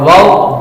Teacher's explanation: दोनों होठों की गुलाई से अदा होता है